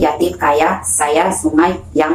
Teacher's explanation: Nah, kalau semivokal palatal Y itu dihasilkan dengan mendekatkan lidah pada langit-langit keras tetapi tidak sampai menghambat udara yang keluar dari paru-paru